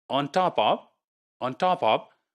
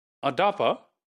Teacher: You see, the on is made, it is nasalized, right? And the t sound, which is voiceless, it becomes voiced